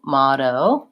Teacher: making sure you're lengthening on your last O and you're saying more of an ah with that flap T in the middle is how you pronounce that word.